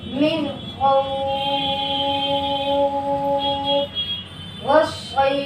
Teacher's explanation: لین کے بعد والا حرف وقف کی وجہ سے ساکن کر لیا گیا ہو تو وہاں پر مد ہوگا اور 3 الف کے برابر کھینچ کر پڑھا جائے گا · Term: مد لین عارضی وقفی